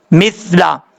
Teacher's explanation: بعض اوقات لوگ پڑھتے ہیں مثلا، یہ غلط ہے، سیٹی نہیں آنی چاہیے